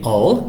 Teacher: All es un sonido un poquito más cerrado, no es una A, sino una O